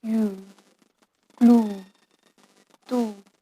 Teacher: U sound is back vowel which is long, high, back rounded vowel.